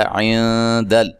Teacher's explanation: نون ساکن کا اخفا مع الغنہ ہے، باریک اخفا کرنا ہے، دال لام کو ہلانا نہیں ہے۔